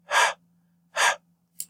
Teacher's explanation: And then you go down all the way to the vocal folds at the glottis, and you are going to make this sound. So the vocal folds are approximated, not completely closed, and then you push a column of air through to make that friction. And because that friction is produced at the glottis, we call it a glottal fricative.